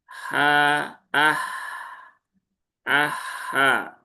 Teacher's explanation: Hak ini ada di tengah tenggorokan ya. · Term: hak sukun